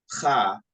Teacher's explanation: You gotta say that cha with kind of in your throat a little bit.